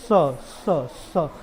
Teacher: उसके बाद दंत स, दंत स, स, स, स। देख रहे, स बोलते हो दांत से हवा निकलती है। नॉर्मल स बोल के देखिए, हवा निकल रही है दांत से, मुंह से बाहर निकला हवा, स, स, स।